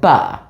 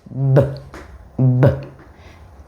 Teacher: Now you gotta be careful. You don't want to go ba. It's just b, b. Otherwise, if it's ba and the word is B-A-T, they're gonna go ba-at.